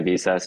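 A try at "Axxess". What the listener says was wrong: Access. You have to ignore the V. It's access. access. It is pronounced access. for listeners not familiar, they instead of an A, they have a V. So you would think, and I thought, and everyone I know originally thought it was Visas, but no, it is pronounced access.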